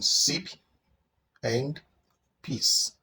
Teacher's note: S is a voiceless sound, and it is in sip and peace.